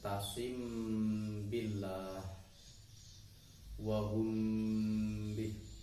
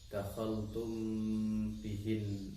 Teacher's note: apabila ada mim sukun bertemu dengan huruf ba, maka bacaannya adalah disebut ikhfa syafawi. Membacanya harus samar-samar dan didengungkan